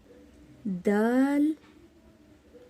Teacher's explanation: زبان کی نوک ثنایا علیہ کی جڑ سے لگتی ہے، جب جا کر دال ادا ہوتا ہے